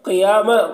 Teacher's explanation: قاف کو پر پڑھنا ہے، اور یا میں کھڑا زبر ایک الف کے برابر کھینچ کر پڑھیں گے۔ اور یہاں پر تا وقف مطلق کی علامت ہے، یہاں پر جب وقف کریں گے تو یہ گول تا جو ہے یہ ہائے ساکنہ سے بدل جائے گی، تو قیامہ پڑھا جائے گا۔